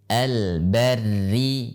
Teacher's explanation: pada saat dia dalam keadaan kasrah, maka dia dibaca dengan tipis walaupun sebelumnya adalah fathah.